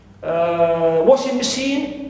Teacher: also we stress the first part, which is washing. So as you see here, always in compound nouns, noun plus noun, or noun, or gerund plus noun, we stress the first element and the first part in these compound nouns.